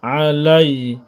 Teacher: আইন অক্ষর গলার মধ্যে একটু চাপ দিয়ে পড়ব।